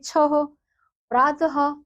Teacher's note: जो विसर्ग है उसकी ध्वनि ह के रूप में प्रयोग की जाती है, जैसे छह, प्रातः।